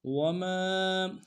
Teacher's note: میم کے ساتھ الف مدہ ہے، ایک الف دال میں کھینچیں گے